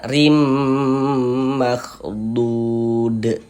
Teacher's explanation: Huruf ro-nya dibaca tipis, dibaca tarkik, sehingganya pangkal lisan kita tidak naik terangkat ke atas ya, rileks saja lidah kita.